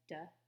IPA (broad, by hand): d